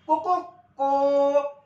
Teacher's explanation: सुरुवातीचा रस्व वाचतो मधला दीर्घ असतो आणि शेवटचा असतो तो काय असतो अति दीर्घ असतो म्हणून यांच्या मात्रा वाढत जातात म्हणून यांना प्लुत असं म्हणायचं